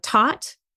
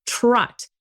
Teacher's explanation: So a child is actually hearing a regular T versus what's called a retroflex T